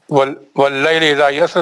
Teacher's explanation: वल्लैलि इज़ा यस्र, दोनों अलिफ, पहला अलिफ वसली है, दूसरा अलिफ जो है वो हमारा हमजा है, तीसरा अलिफ मध्य असली है। उसके बाद रा जो है वो या का जबर पकड़ेगा तीसरे कायदे के हिसाब से और मोटा पड़ा जाएगा